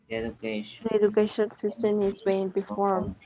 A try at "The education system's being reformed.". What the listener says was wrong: Try to use a contraction. Yes, use a contraction, okay? Don't tell me the education system is. The education system's being reformed.